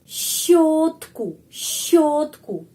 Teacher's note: huruf sy sama seperti sh tapi lebih lebih dengan tenaga